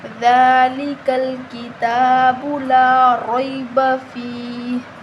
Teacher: فا کے آگے یا مدہ ہے تو ہم اس کو 1 الف کے برابر لمبا کریں گے